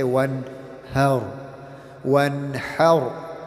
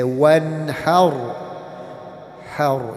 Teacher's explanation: it's the ha from the throat and not the ha from the chest